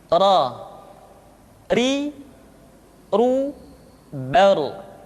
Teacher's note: Berikutnya adalah huruf ra, diucapkan dengan menyentuhkan punggung lidah dengan langit-langit